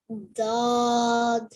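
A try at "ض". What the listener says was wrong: Okay, so you're doing everything right, but what you need to do is just make your tongue thicker and heavier and make it curl up a bit more.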